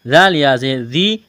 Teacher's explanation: ذال کو نرم کرنا ہے، یا ساکن سے پہلے زیر ہے، یا مدہ ہے، 1 الف کے برابر کھینچنا ہے